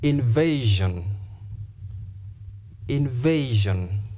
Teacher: because the word ends in s i o n you stress penultimate second syllable